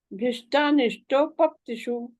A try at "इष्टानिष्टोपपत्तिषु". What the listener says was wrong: ई माता जी, ई वाला, ई इमली ईक वाला, इष्टानिष्टोपपत्तिषु इष्ट एक एक वर्ड लेते, इष्टा इष्टा